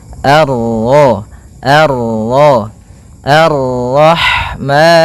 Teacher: Kemudian ini bertemu dengan huruf ra yang berharakat tasydid, maka ra-nya kita baca dengan tafkhim